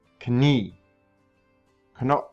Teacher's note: notice that i instantly go from the k sound to the end sound